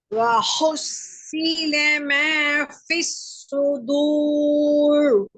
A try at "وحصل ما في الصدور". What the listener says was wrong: வழியில போதாது, சுவாதும் தடிப்பும் போதாது. நாக்க பின்னு கொண்டு போகணும்.